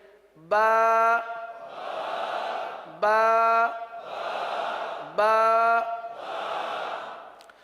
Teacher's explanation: बा होठों के दोनों होठों के तर हिस्से से अदा होता है